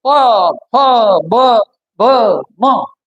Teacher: त्या हवेचा संबंध ओठांशी आलेला आहे त्याचा संबंध ओठांशी आलेला आहे प ब म एक ओठ दुसऱ्या ओठाला स्पर्श करतो एक दुसऱ्या ओठाला हे स्पर्श व्यंजने हे स्पर्श व्यंजने आहेत आणि · मुखामधून निघालेली हवा जी आहे त्या हवेचा संबंध ओठांशी आलेला आहे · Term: ओष्ठ